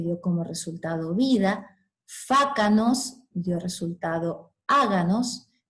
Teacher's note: K de fácanos, sorda, se sonoriza por la presencia de las dos vocales. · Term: sonorización de oclusivas intervocálicas